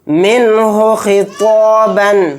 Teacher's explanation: نون کو ظاہر کر کے بلا غنہ کے جلد پڑھیں گے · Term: اظہار